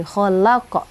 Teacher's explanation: huruf qalqalahnya huruf qof ya berada di akhir kalimat ya pada wakaf ya. Jadi dia agak besar bunyi khalaqo gitu maka disebut dengan qalqalah kubro gitu ya. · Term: qalqalah kubra